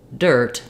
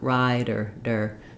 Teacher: it's just a light touchup really think of it like a very light D sound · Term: flap